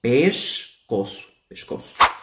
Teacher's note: La C de cedilla, como ya he dicho, suena como una S normal, pero aquí el sonido que puede ser diferente es la S. La S, al estar entre vocal y consonante, suena como una SH.